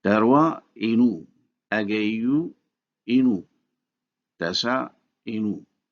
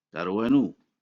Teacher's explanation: The vowel of the possessive pronoun inu is dropped to keep the CV pattern, and so darwa inu is pronounced in fact darwanu.